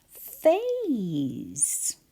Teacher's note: where we hear one sound at the beginning with my teeth on my bottom lip, but we write P-H, A, and then S-E.